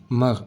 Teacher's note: Saat kita baca mar. Mar. Ada seperti getaran di ujung kerongkongan. Mar. Tetapi tidak pakai r.